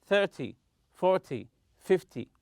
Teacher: 10 numbers such as 20 and 30 always stress the first syllable